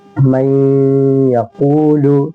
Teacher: من یقول, من نون ساکن کے بعد یا آ گئی, اس لیے ہم نون ساکن کو یا سے ادغام کر کے غنہ کے ساتھ پڑھیں گے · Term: ادغام یا